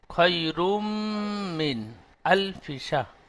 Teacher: নুন সাকিনের পরে হরফে হালকি 6টি অক্ষরের মধ্যে হামজা এসেছে নুন সাকিন গুন্না হবে না